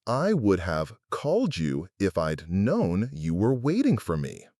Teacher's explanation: The rhythm is ta-ka-ta, bum, ta-ta-ta-ta, bum, ta-ta-ta, bum.